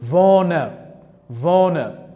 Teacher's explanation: Boyni aytgandek, odatda e harfi so'zlarning oxirgi bo'g'inida kelsa yoki so'zda e harfiga urg'u tushmasa, biz buni e harfini jarangsiz yoki xuddi ingliz tilidagi shva tovushi kabi o'qishimiz kerak